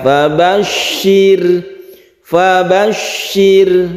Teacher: rnya ini tipis atau tarqik karena sebelumnya ada kasrah caranya tarqik itu bibir kita dikebawahkan